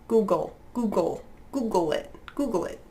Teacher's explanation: it's a lot of g. And it's got the dark L as well.